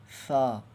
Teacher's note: سا کو بھی زبان کو تھوڑا زیادہ باہر نکال کے ہوا کے ساتھ پڑھیں گے تو سا ادا ہوگا